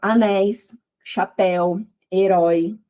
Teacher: então ele é aberto porque ele sai pela via oral, ele não é nasal. E ele também aqui no caso, eles são todos eh decrescentes. · E no caso aqui a gente tá tendo um um ditongo, é, que é decrescente, começa na vogal mais forte e termina na semivogal